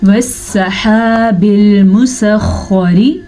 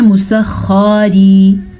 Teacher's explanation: خا کو پر پڑھنا ہے، شد کا دھیان رکھنا ہے اور را کے نیچے زیر ہے تو را باریک پڑھی جائے گی.